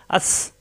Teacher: জিব্বা নিচে চাপ দিয়ে শক্ত ছফির হরফ বাতাস বের হবে